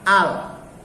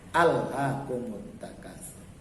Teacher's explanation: Makanya lamnya dibaca tipis atau lam tarkik karena lamnya bukan terdapat pada kata Allah.